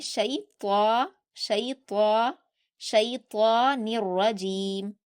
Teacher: یہاں پر شیطان میں طا کو آپ پر پڑھیں گے، شین کو نہیں۔ شی کو آپ نارمل پڑھیں گے، شیطان، شیطان، شیطان الرجیم، الرجیم، الرجیم میں را پر آپ کو سختی بھی کرنی ہے اور آپ کو را کو پر بھی پڑھنا ہے، موٹا پڑھنا ہے، رجیم پڑھنا ہے، رجیم نہیں پڑھنا، رجیم پڑھنا ہے۔